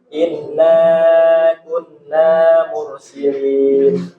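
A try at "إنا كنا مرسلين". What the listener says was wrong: Ya, jadi Bapak harus perhatikan huruf nun bertasydid di tempo ya. Iya, jadi harus tempo.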